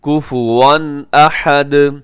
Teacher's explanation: اظہار حلقی ہوگا، یعنی آپ اس کو تیزی سے پڑھیں گے، یہاں غنہ نہیں کریں گے